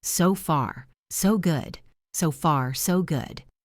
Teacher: Listen to the rhythm. It is two equal beats. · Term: 2 equal beats